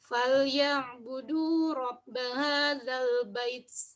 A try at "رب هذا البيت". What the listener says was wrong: لكن لا تنزعوا الياء، يعني أنتم لا تكملون نطق الياء. رب هذا البيت. بيت، نريد وضوح الياء. اجعلوا الياء واضحة.